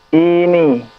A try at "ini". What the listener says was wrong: Kenapa i-nya panjang? Ini. Ini atau ini?